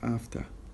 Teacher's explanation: this final letter R is not pronounced at the end of the word we don't really say we don't really pronounce the R it's